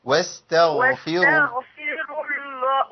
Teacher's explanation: يبان الغين وسكنها مفخمه شويه كمان